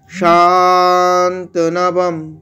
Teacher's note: সাটাকে দীর্ঘ আছে তাই শান্তনাম এখানে অনুস্বরটা অর্ধেক ম উচ্চারণ হচ্ছে অনুস্বরটাকে ম উচ্চারণ করছি কেন কেন পরে প বর্গের প আছে